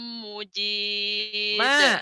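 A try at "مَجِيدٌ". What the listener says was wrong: Bukan Majid. Majid bukan Mujid.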